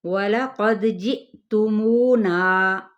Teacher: وَلَقَدْ جِئْتُمُونَا، یہاں تک پہلے دیکھ لیتے ہیں۔ واو ہونٹوں کی ناتمام گلائی کے ساتھ، قاف پر ہے، دال پہ قلقلہ کیا جائے گا، یعنی ہلایا جائے گا۔ جِئْتُمُونَا، جی پہ یہاں پہ حمزہ پہ جھٹکا دیا جائے گا، مو پہ واو مدہ اور نا پہ الف مدہ۔